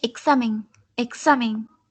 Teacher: al recaer sobre la A, se trata de una palabra grave o llana